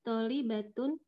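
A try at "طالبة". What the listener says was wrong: Tolibatun tuh tonya panjang ya. Tolibatun.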